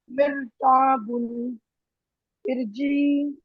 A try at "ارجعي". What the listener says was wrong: ارجعی را کو اوپر کریے ارجعی